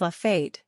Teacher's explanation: the vowel is long, as in hey